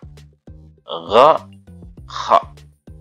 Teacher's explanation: Kemudian ada tenggorokan bagian atas, ghain dan kha. Nah, atasnya dikit dari ain dan ha.